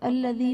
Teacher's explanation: یا ساکن سے پہلے زیر ہے، یا مدہ کا قاعدہ ہے، اسے بھی ایک الف یعنی 2 حرکات کے برابر کھینچ کر پڑھیں گے